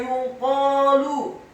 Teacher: Thumma yuqalu, kata yuqalu, huruf ya-nya dibaca tipis, dhammah 1 harokat. Huruf qaf-nya dibaca tafkhim, tebal, fathah 2 harokat karena setelahnya ada alif. Kemudian huruf lamnya dibaca tipis, dhammah 1 harokat.